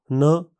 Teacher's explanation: न इस ध्वनि के उच्चारण में जीभ ऊपर के दांतों के पीछे स्थित उभार में लगाई जाती है जिससे मुंह का मार्ग पूरी तरह बंद हो जाता है। मुलायम तालु नीचे होने के कारण हवा नाक से बाहर निकलती है। यह हिंदी के न व्यंजन जैसा ही डोगरी में इसका उच्चारण है।